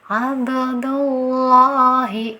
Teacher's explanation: dhomah Nah Padahal di sini berharokat dhomah jadi dia tafkhim ya cara bacanya harus ditebalkan hati-hati jangan sampai ada huruf wau nya ya